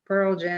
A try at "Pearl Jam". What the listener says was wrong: No, it was the word stress. Like I say Pearl Jam. She said Pearl Jam. So it's about word stress.